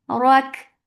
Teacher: Whenever kaf is with sukoon, it has hums.